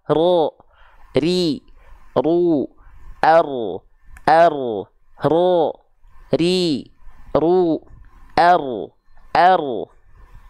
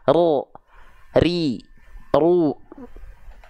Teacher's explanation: tetap getarannya walaupun sedikit mungkin hanya sekitar satu atau dua getaran tapi tetap lugas dan jelas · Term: takrir